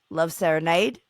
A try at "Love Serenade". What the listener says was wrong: Sounds like lemonade when you say it. Love serenade.